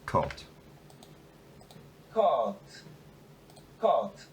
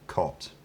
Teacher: i think there's a little bit of aspiration of the word initial plosive